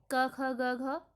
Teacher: तो इस प्रकार आपके वर्ग क वर्ग जो कंठ हैं, क, ख, ग, घ, ये आपके क कंठ से उच्चारित वाले वर्ण हैं